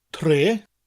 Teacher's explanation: We've got that T sound and then the rolling R